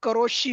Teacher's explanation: हा, र च्या जवळ जेव्हा सी येतो ना तेव्हा करोशी असं होतं.